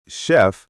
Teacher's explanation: And in words like chef, it sounds like sh.